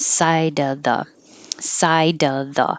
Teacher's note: that silent e doesn't affect the d connecting to the o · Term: connection